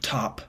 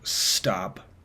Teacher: there's more of a puff of air that comes out with the aspirated version